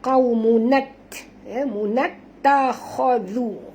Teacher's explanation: Masukkan bunyi nun ke dalam ta, terus bunyikan nat.